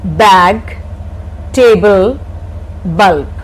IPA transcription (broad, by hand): bæg ˈteɪbl bʌlb